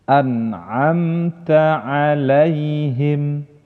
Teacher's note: yang pertama Meme sukun bertemu dengan huruf k Ana Anta ngalaihim huruf mim sukun nya tidak didengungkan dan tidak juga dipantulkan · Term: idhar syafawi